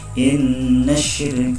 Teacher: inna, di situ adalah bacaan gunnah atau huruf gunnah berdengung 2 harokat